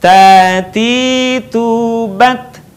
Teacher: Sudah saya jelaskan tadi cara melafalkan huruf ta dengan menyentuhkan ujung lidah kita dengan gusi gigi seri bagian atas, dengan mengalirkan sedikit nafas kita